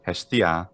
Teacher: The pitch accent's on the E.